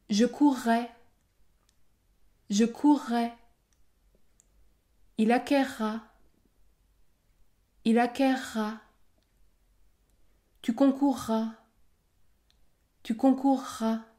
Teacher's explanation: dans ces trois verbes j'ai prononcé un r double